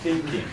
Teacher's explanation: the pronunciation of the TH sound, the tongue needs to come out of the mouth a little bit